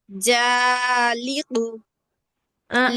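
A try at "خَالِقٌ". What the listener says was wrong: ওটা জিম না আপু।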